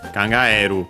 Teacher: as for its accent, it is actually accented on the e.